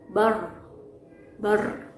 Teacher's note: pengucapan huruf ro tidak disertai dengan keluarnya nafas, tapi terdengar jelas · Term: jahr